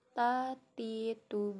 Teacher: ujung lidah ke gusi gigi seri gigi seri bagian atas dengan mengalirkan sedikit hembusan nafas contohnya tatitu badge dengan cara menyentuhkan ujung lidah Kedinding gigi seri